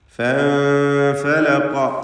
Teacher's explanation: സാക്കിനത്തായ നൂനും ശേഷം ഫാഉം ഇഖ്ഫാ ഹഖീഖി നൽകി മറച്ചു മണിക്കണം നൂനിനെ.